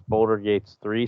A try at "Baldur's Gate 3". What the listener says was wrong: That's not even how you say it. You said Boulder Gates 3. Like, that's